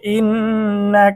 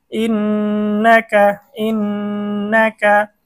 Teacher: হরকতের বামে নুনের মধ্যে তাসদিদ হয়েছে আমাদেরকে গুন্না করে পড়তে হবে